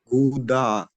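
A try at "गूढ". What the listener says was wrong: No Gudha. Don't say the. When you say the, your tongue touches the teeth. But here the tongue should not touch the teeth. The tongue should go up to the roof and say Gudha. Like in doing. The duh sound should be like in doing. Gudha.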